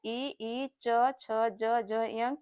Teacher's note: ई, च, छ, ज, झ, य का भी उच्चारण स्थान तालु है।